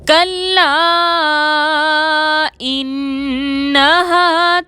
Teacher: کلا میں الف مدہ ہے اور اس کے بعد حمزہ آ رہا ہے، مد ہوگی 4 حرکت کے برابر کھینچ کر پڑھیں گے